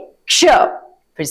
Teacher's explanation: इसमें क की भी ध्वनि आती है। परंतु क की ध्वनि थोड़ी छोटी होती है।